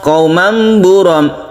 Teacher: Tanwin bertemu dengan ba disebut dengan iklab. Suara tanwin itu berubah menjadi mim. Makanya di sini ada mim yang kecil sebagai tanda baca bahwa ini menjadi mim.